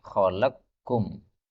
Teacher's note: qof ketemu Kaf ini boleh idgham menjadi khalaqqum